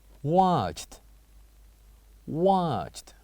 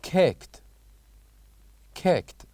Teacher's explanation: So these verbs are the kind of verbs that has the same letters, E and D ends, but with different sound, the sounds of T at the end of each of them